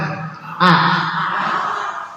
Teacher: A itu adanya aksal halqi di paling atas tenggorokan